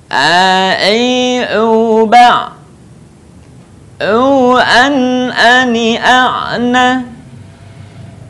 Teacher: Huruf a keluar dari tengah tenggorokan kita sama dengan cara kita melafalkan huruf ha. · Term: huruf ain